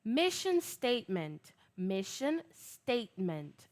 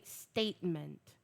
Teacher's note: The T is very glottal.